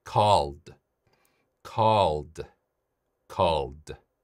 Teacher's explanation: 마지막 소리 L 소리 유성음. 그래서 D.